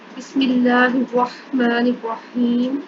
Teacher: اللہ سے پہلے زیر تھی, میم کے نیچے زیر تھی, اس لیے ہم نے اللہ کو باریک پڑھا ہے, موٹا کر کے نہیں پڑھا · جو را ہے اس پر زبر ہے, اس کے اوپر زبر ہے, اس لیے اس کو ہم موٹا کر کے پڑھیں گے